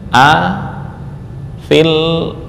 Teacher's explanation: ini fa langsung di masukkan ke lam · Maka ya mad digugurkan ketika dibaca wasal dan hasilnya adalah bacaan fa berharakat kasrah lalu langsung ketemu huruf lam yang bertasydid